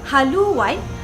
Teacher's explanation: fonem W disisipkan di antara vokal tinggi U dan A sehingga menjadi haluan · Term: penyisipan geluncuran W